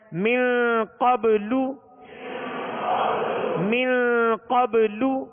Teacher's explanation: قاف کو پر پڑھیں گے حروف مستعلیہ میں سے ہے اور من پہ غنہ کریں گے اخفاء کا غنہ ہے من